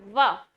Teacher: व का उच्चारण स्थान दंतोष्ठ होता है, क्योंकि जब भी आप बोलते हैं व तो क्या होता है कि आपके होठ आपस में मिलते हैं और जीवा दांतों को जाकर के स्पर्श करती है।